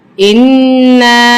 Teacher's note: हमज़ा नून ज़ेर इन, नून अलिफ मद ज़बर ना। अब नून पे तजदीद है, इसको हम सख्ती के साथ जमाव के साथ पढ़ेंगे और यहाँ पे अलिफ के ऊपर मद है तो इसको हम खूब खींचेंगे।